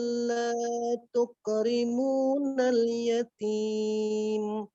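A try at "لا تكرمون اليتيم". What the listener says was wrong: Kafnya berdesis tuk. Bukan tuko, tapi tuk. Kalla bal la tuk. Kemudian la-nya jangan terlalu panjang.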